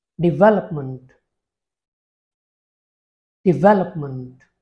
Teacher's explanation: syllables that means it is spoken in four parts in the primary stress falls on the second syllable